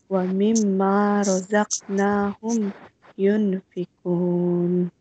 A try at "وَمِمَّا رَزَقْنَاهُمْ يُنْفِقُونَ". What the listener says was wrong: Here you have an alif mada. Here you have an alif mada. So you need to elongate the pronunciation. You need to stretch the pronunciation, okay? Don't keep it short.